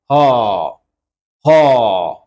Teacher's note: হ ধ্বনিটি উচ্চারণের সময় কন্ঠনালীতে পেশির সংকোচনের ফলে উৎপন্ন হয় এবং কম্পন হয় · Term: কন্ঠনালীয়